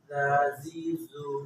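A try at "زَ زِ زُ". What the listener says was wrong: না, আর একটু পাতলা,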